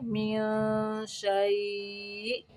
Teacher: حمزہ کو ساکن کرتے ہوئے جھٹکا دیں گے